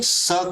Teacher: दांत से स का उच्चारण होता है